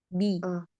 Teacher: Jangan biarkan udara keluar dari 'ba'.